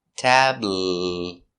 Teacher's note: It's a light L. The tongue's in the front.